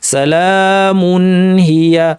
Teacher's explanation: এই মুনকে অতিরিক্ত লম্বা করব না, স্বাভাবিক গুন্নায় রেখে স্বাভাবিক দৈর্ঘ্যে রেখে আমরা স্পষ্টভাবে পড়ব।